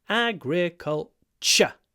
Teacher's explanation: when we say culture, T-U-R-E is pronounced with a ch